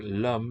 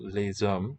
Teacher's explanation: the difference between the singular l'homme and the plural les hommes involves these two segments, the vowel e and the s, which is voiced as a z sound.